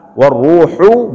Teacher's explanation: Ini ha harus betul-betul dalam tenggorokan, ha, jangan dibaca ha.